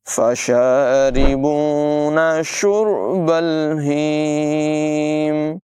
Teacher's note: ہا جو ہے اس کی آواز حلقے نچلے حصے سے ادا ہوگی